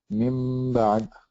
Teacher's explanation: the meme sound is hidden because I'm closing my lips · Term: iqlab